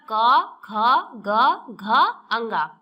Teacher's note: कंठ और निचली जीभ के स्पर्श से बोले जाने वाले वर्ण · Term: कंठ वर्ण